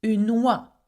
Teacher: Okay, oie, and it has no W. But adding une in front of it because it's a feminine article, then we have to say une oie. We have to make the liaison.